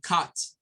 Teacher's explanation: parece una A, pero no es una A, ¿verdad? Es como una mezcla entre A y U